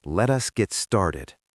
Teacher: Notice the strong downward inflection.